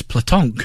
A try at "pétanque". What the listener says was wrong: No, it's no L in it at all. It's P-E, E acute, T-A-N-Q-U-E.